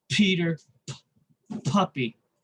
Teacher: the vocal chords do not vibrate why because they're unvoiced